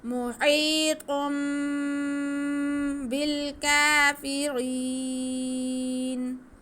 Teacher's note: واللہ، واللہ محیط، میم پہ پیش، ہا کے نیچے زیر، یا ساکن، یا ساکن سے پہلے زیر تو یا مدہ، اس کو ہم کھینچیں گے. ہا ہلکی، حرف کے حلق کے سینٹر سے ادا ہوگی · نون ساکن یا تنوین کے بعد با آ جائے تو با کی آواز کو، تنوین کی آواز کو ہم میم میں بدل کر پڑھتے ہیں. جیسے ہمارے پاس تھا محیطن، تو دو پیش تن. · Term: اقلاب